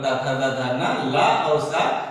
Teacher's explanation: ये जो है ली पूरा तावर्ग मतलब ता था दा धा ना, ला और सा ये सब दांत से उच्चरित होते हैं, इसलिए इसे दंत्य कहते हैं।